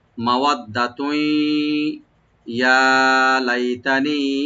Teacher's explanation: তানবিন উপর যেহেতু ইয়া আসছে এখানে এদগাম উইথ গুন্না হবে, গুন্না সহকারে আমরা সংযোগ করব